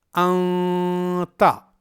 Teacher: ہمیں اخفا کی آواز ایک الف کے برابر لمبی کرنی ہے، اس طرح انتا۔